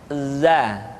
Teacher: Diucapkan dengan cara ujung lidah kita berada di antara dua gigi seri bagian atas dan bagian bawah. Za. menyerupai dengan pengucapan huruf Z di dalam huruf Latin. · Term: huruf za